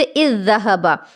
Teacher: ذال کا ذال میں ادغام ہو رہا ہے، تو دونوں حرف ایک ہی ہیں، اسی وجہ سے اس کو مثلین کہا جائے گا، یعنی مثل کا معنی ہی ہوتا ہے ایک جیسا، تو یہ دونوں حرف ذال ہی ہیں، اسی وجہ سے ذال کا ذال میں ادغام ہو رہا ہے تو اس کو ادغام مثلین کہیں گے۔